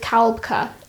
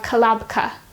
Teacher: l b and k all clustered together in the middle so to resolve this we need to insert our helping vowel a